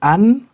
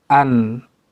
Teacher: Kalau an, ujung saja yang nempel di gusi.